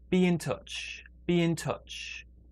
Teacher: big stress on touch and smaller stress well not really anything there